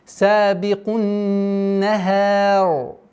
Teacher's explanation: При остановке ра с сукуном уходит твердое произношение.